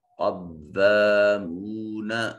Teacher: قوف حرف استعلاء ہے، مستعلیہ ہے، اس میں صفت استعلاء ہونے کی وجہ سے اس کو مفخم ادا کریں گے۔ حروف مستعلیہ جہاں بھی آئیں گے قرآن مجید میں ان کو مفخم موٹا یعنی پر کر کے پڑھا جائے گا۔